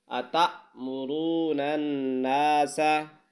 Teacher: یہاں را کو پر پڑھنا ہے یعنی موٹا پڑھنا ہے، اور نون کو نون کے ساتھ ملانا ہے، تشدید ہے تو یہاں پر غنہ ہوگا۔